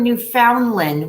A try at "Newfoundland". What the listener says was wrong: Newfoundland. It's pronounced Newfoundland. No extra L in there.